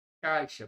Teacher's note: Então, da letra A para a letra I, o som desce.